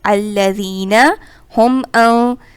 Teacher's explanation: یہاں نون یہاں غنہ ہو رہا ہے اور غنہ کی ادائیگی ہم ناک سے کرتے ہیں